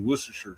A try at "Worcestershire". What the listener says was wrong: Yeah, it's Worcester, but whatever. We spell it Worcestershire, but we pronounce it Worcester.